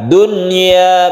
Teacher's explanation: Izhar wajib artinya kita membaca nun ini harus jelas dan tidak berdengung. Dunya tanpa ditasydidkan ke ya, tidak diidghamkan dan tidak digunakan.